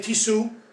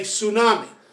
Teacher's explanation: when you say tsunami as in japanese it starts with ts